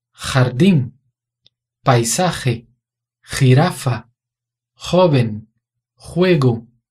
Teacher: Em todas as palavras, o som do J é R. É o som de garganta.